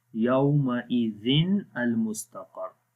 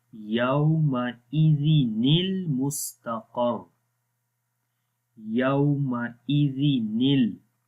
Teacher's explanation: So remember, if tanween is followed by hamzatul wasl, so that time you will skip one kasra from there, and the second kasra will be replaced with the noon with kasra, and that noon we connect with the next word